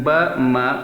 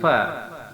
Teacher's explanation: kalau ba dan ma itu 2 bibir bersentuhan, sedangkan fa itu bibir bawah dengan gigi bagian atas yang bersentuhan